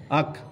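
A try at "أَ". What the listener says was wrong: আ আ আ আ। হামজা হামজা জবর আ, আহ বলছি আমি বলছি আ আ। আপনি আক কইতেছেন, আহ কইতেছেন। এরম করতেন না, আ এরম করতেন না, আমার কফি করতেন না শব্দটা।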